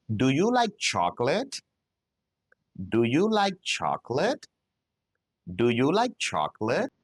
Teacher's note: at the end of questions that begin with do, I need you to use rising intonation.